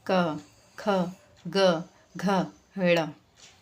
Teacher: से बोल के देखिए क ख ग घ ड़ है ना जब आप इनको बोलेंगे तो आपको समझ में आएगा कि जो वॉइस आ रही है वो हमारे गले से आ रही है कंठ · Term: क वर्ग